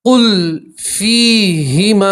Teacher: یا مدہ اس لیے آپ ایک الف کے برابر کھینچیں گے اور یہاں مد منفصل ہے تو مد کو آپ تین الف کے برابر کھینچیں گے.